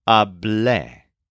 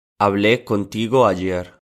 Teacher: The form for I talked is hablé, with a stress on the second syllable. So this is spelled H-A-B-L-E with an accent mark on the E.